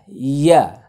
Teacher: ইয়াটা হচ্ছে জিহ্বার মধ্যখান থেকে উচ্চারিত হয়। এটা হালকা একটু চাষা দিয়ে উচ্চারণ করতে হবে।